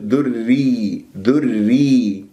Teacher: وإن كان كسرة راح تكون عندنا مرققة، فننتبه مثل ذري، ذري، لاحظتم الراء هنا مشددة بكسر فنقرأها راء مرققة